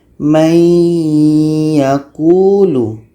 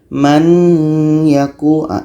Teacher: nun mati bertemu dengan ya. Masuk nun kepada ya. May yakulu, dengung 2 harakat.